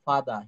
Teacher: British উচ্চারণে কিন্তু এই আর এর উচ্চারণটা ওরা কিন্তু আ বলে থাকে